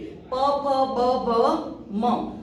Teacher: Like last जो है प, फ, ब, भ, म, ओष्ठ वर्ण कहा जाता है। यहाँ पे बोलने से अपने जो दोनों लिप हैं उसके सहायता के बिना हम उसे नहीं बोल सकते।